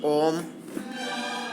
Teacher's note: इन स्वरों के उच्चारण में हरस स्वर से 3 गुना समय लगता है। जैसे ओम प्लुप्त स्वर है।